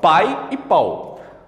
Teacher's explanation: semivogal é metade Então ela é pronunciada de forma mais fraca